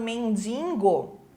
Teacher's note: as pessoas também Colocam um n lá atrás né falando mendingo